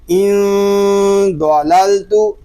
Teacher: حمزہ نون زیر ان، ضاد زبر دو، ان دو، لام زبر لل، ان ضلل، تا پیشتو، ان ضللتو، نون ساکن میں اخفا ضاد پر. یہاں نون ساکن میں اخفا اس لیے ہو رہا ہے کہ نون ساکن کے بعد حروف اخفا میں سے ضاد آ گیا ہے، اور ضاد اس لیے پر ہے کہ یہ حروف مستعلیہ میں سے ہے.